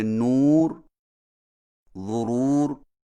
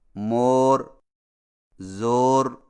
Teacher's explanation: واو مدہ اگرچہ اردو میں معروف اور مجہول دونوں طرح پڑھی جاتی ہے، جیسے نور، ضرور کا واو معروف ہے، جبکہ مور، زور کا واو مجہول ہے۔ لیکن قرآن مجید میں واو مدہ کی آواز نور کی واو کی طرح ہوتی ہے۔